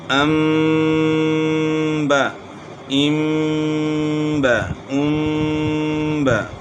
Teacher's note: اب میم ساکن کے بعد با، جب میم ساکن کے بعد با آئے گی تو اس میں بھی غنہ کرنا ہے، یعنی اخفاء کے ساتھ غنہ ہوگا